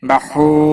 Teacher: واو مدہ ہے، ایک الف کے برابر کھینچ کر پڑھیں گے، نا کو کھینچنا نہیں.